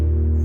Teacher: अक्षरशः मोरपीस हलत एवढी हवा आपण ओठातून बाहेर फेकतो